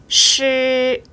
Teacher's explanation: 혀와 입천장 사이에 공간이 생기죠. 바람이 들락날락합니다.